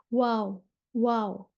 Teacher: वाव दोनों होंठों के गोल ना तमाम मिलने से अदा होती है